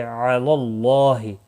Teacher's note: اللہ کا لام زبر کی وجہ سے پر پڑا جائے گا، اس کے اوپر کھڑی زبر بھی ہے، ایک الف کے برابر کھینچ کر پڑھیں گے، ہی کو کھینچنا نہیں۔